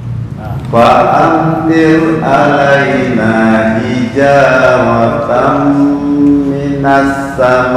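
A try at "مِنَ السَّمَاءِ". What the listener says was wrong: Kembali lagi. Bukan minas sama, itu huruf hamznya belum sempurna itu. Minas sama.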